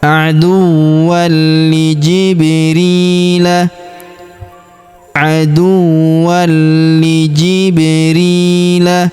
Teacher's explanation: Setelah kita tahan dan tekan pada huruf li, langsung kita sambung masuk ke huruf ba yang berharakat sukun ya. Maka kita pantulkan atau kita qalqalahkan · Huruf ri kita panjangkan 2 harokat karena terdapat ya sukun di depannya